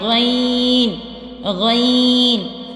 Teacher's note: غین ابتدائی خلق یعنی خلق کا جو شروع والا حصہ ہے نا جو منہ کی طرف ہے